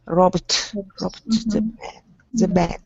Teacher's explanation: there is no sound between B and D, and it's also voiced because B is voiced